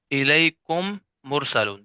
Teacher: میم ساکن کے بعد میم آ جائے تو ادغام ہوگا، یعنی دونوں میم ایک ہو جائیں گے اور اس میں غنہ بھی ہوگا